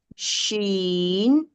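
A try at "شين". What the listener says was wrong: Huruf shin salah. Cuba tengok nak sebut dia pun bagi kena juga.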